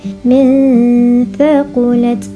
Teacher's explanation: nun mati bertemu dengan huruf ikhfa dalam dua kalimah. Huruf ikhfa-nya adalah huruf tha dan bacaannya dengung.